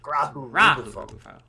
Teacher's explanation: So it's emphasis on the first syllable of each word.